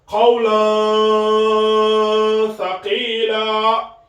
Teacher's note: on dissimule ici le tanwin bil fatha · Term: ikhfa